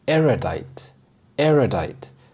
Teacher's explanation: The stress is on the first syllable, erudite.